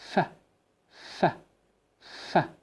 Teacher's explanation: the vocal cords are not vibrating. There is no any movement for the vocal cords. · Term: voiceless sounds